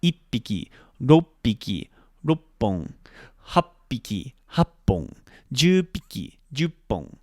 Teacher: So we have to make sure when you're saying it that you have that small tsu sound, which is called a glottal stop, or a small pause in the word